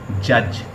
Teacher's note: एक में ड और उसके बाद ज साउंड मिलके एक साउंड बनाती है